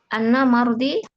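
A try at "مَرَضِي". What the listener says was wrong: Mardi atau marodi? Marodi, penyakit. Fathah.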